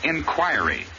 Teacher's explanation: inquiry accent always on the second syllable and the i is always long